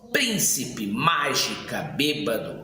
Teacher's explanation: São proparoxítonas, ou seja, tem como sílaba tônica a antepenúltima.